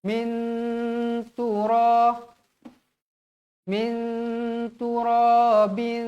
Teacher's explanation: kosong bertemu huruf ta hukumnya ikhfa Hakiki Bagaimana bacaan Ikhfa Hakiki wajib dibaca dengung dengan kadar dua harakat